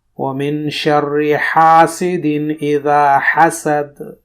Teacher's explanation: یہاں پر ہا کا تلفظ کرنا ہے حسد، نہ کہ حسد بولنا ہے دو چشمی ہا کے ساتھ